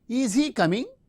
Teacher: the fronting of the verb and the rising tone since it is a polarity question or yes no type question we use the rising tone